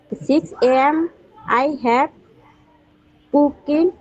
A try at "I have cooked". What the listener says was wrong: না, কুকিং কুকটা উচ্চারণটা হবে কুকড। I have কুকড।